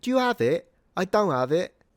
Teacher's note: Cockneys do drop their H's.